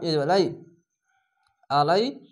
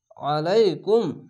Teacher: আইনটিকে মোটা করে গলা চিপা করবেন